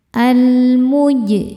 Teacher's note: Jim sukun dihukumi qalqalah sugro karena jim sukunnya sukun asli dan ada di tengah bacaan. Cara bacanya dipantulkan dengan pantulan yang kecil. · alif lam menghadapi huruf qamariah yaitu mim cara bacanya lam dibaca dengan jelas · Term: alif lam qamariah, alif lam qamariyah, qalqalah sughra